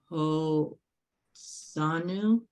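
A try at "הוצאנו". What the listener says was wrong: That's a t. Hamotzi. Hamotzi, from the blessing. Hamotzi lechem min haaretz.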